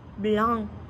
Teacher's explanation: La voyelle A, blanc, c'est ouverte postérieure, arrondie et nasale.